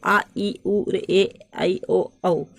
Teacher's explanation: ख वाला है दीर्घ स्वर यानी लॉन्ग वोवेल्स, शॉर्ट यानी छोटा और लॉन्ग यानी बड़ा। तो जिन स्वरों को बोलने में ह्रस्व स्वरों की अपेक्षा अधिक समय लगता है उन्हें दीर्घ स्वर कहते हैं